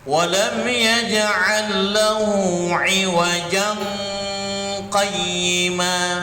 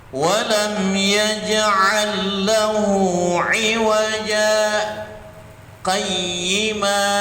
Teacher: Kalau misalnya antum nak menampakkan saktahnya, tidak boleh di ikhfakan. Kalau dia bacanya biasa begini kan, walam yaj'al lahu 'iwajan qayyima.